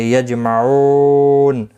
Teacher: یجمعون، جیم ساکن پر قلقلہ ہوگا